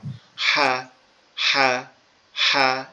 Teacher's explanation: এটা আমাদের এই গলার এইখান থেকে উচ্চারিত হবে, আমাদের এই গলার এই যে উঁচু জায়গাটা আছে এখান থেকে উচ্চারিত হবে একটু শক্ত আওয়াজে, একটু চাপা আওয়াজে, মানে গলাটা কি ফ্যাস ফ্যাস মতো আওয়াজ হবে একটু।